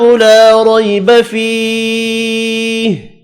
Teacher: لا اور فی الف مدہ اور یا مدہ ہے، ان دونوں کو بھی ایک ایک الف کی مقدار میں کھینچ کر پڑھنا ہے۔